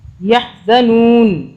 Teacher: ہم نہ نہیں پڑھیں گے کیونکہ ہم یہاں پہ سٹاپ کر رہے ہیں نون کو ہم ساکن کر دیں گے